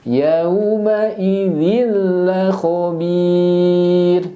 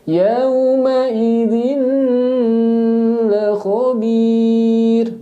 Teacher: Kita baca idgham karena di depannya huruf lam, maka tanpa disertai dengan gunnah. Idgham bila gunnah, tanpa disertai dengan gunnah.